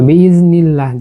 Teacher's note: নুন জের এর পরে আল্লাহ শব্দ আসছে, আমরা লামকে বারিক করে পড়ছি